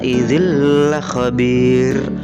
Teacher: tanwin kasrah bertemu dengan lam tapi tanwinnya disini tidak terbaca langsung dimasukkan ke dalam huruf lam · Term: idghom Bila Ghunnah